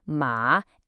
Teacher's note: Com tom que desce e sobe, ma